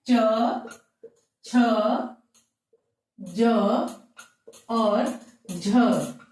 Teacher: स्पर्श संघर्षी व्यंजन है और इन्हें तालव्य व्यंजन भी कहते हैं